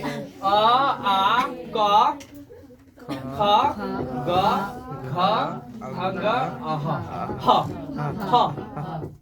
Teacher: आ का उच्चारण स्थान कंठ, क का उच्चारण स्थान कंठ